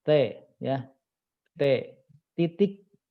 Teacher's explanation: huruf T itu kalau saya sendiri T. Ujung lidah dengan langit-langit depan